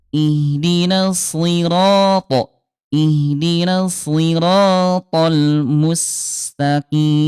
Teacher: huruf shadnya dia tetap tebal walaupun dia kasrah ya. Ee si gitu ya si diangkat pengelidahnya ya.